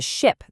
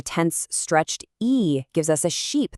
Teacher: A relaxed short i gives us a ship that sails on the ocean, but a tense stretched e gives us a sheep